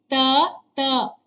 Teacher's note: ಹಲ್ಲುಗಳ ಬಳಿ ಹುಟ್ಟೋದ್ರಿಂದ ಅವುಗಳನ್ನ ದಂತ್ಯಾಕ್ಷರಗಳು ಅಂತ ಕರೀತಾರೆ